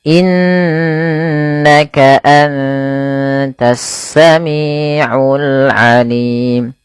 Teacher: Kemudian innaka sama tidak hanya cukup dibaca innaka tapi perlu ditahan suara ghunahnya dua harakat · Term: bacaan ghunah